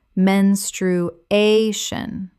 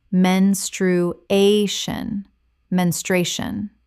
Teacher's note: The stress falls on the third syllable, a.